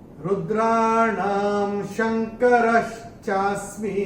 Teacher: पहले चरण में ना के ऊपर अनुस्वार के बाद का अक्षर है श, और अनुस्वार के बाद जब श आएगा तो अनुस्वार का उच्चारण होगा म